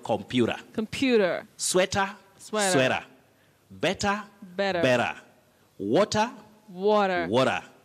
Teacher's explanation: in the northern parts of america we have that problem of not pronouncing letter t when it is in the medial part of a word